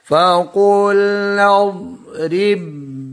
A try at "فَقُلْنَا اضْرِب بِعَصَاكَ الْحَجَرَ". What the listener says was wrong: دعات پہ کیوں کلکلا کر رہے ہو؟